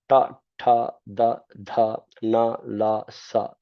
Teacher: With the tongue at the teeth, ta, tha, da, dha, na, la, sa.